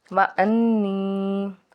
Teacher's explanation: नून मुशद्दिद है तो गुन्ना खूब गुन्ना करेंगे